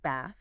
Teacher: So you might hear a speaker from Manchester say BA with a short A, while a speaker from London or Oxford says bath with a long a sound